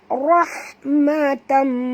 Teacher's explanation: Huruf ra kena baca tebal dan ha sini ha pedas. Jadi jangan tebalkan ha.